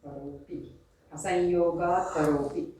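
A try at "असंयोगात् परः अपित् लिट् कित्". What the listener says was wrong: Apit. Not api. Apit lit. Asanyogat paraha. Apit lit kit syat.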